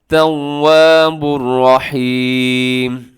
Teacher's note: हुवत तव्वा मजबूती के साथ पढ़ना है, होठों को गोल करना है आपने